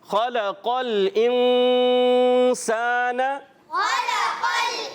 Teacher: غنہ اچھا ادا کیا، ناک میں آواز لے کر جائیں گے